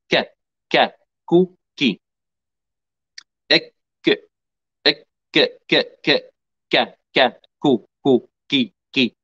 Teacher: بجميع الحركات الكاف واللسان يلتصق مع الحنك اللحمي والعظمي بهذه الطريقة